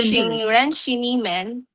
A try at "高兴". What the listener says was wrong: 好，高兴 first tone 呢 is still not 100% there. 高兴，我很高兴认识你们.